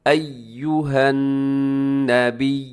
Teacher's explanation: ایہن ڈھیلا کر کے نہیں پڑھنا اسے، کیونکہ اس کے اوپر بھی شد ہے. ایہن، ایو غلط ہو جائے گا، ایہن نبی، بلکہ ایو، ایو ہونٹ آپ کے گول ہو جائیں پیش پر.